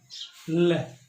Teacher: अब ल व्यंजन को आप उच्चारित करके देख सकते हैं कि हवा है वो जीभ के दोनों पार्श्वों से प्रवाहित होगी